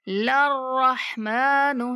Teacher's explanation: लाम को डायरेक्ट मुशद्दद रा से मिलाएंगे